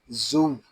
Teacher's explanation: وَإِذَا النُّفُوسُ، زا واو پیش زو، یہاں زا بھی حروف صفیریہ میں سے ہے، اس میں بھی سیٹی کی آواز آئے گی۔